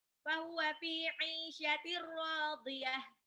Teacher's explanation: Tanwin ketemu ro, langsung dimasukin aja.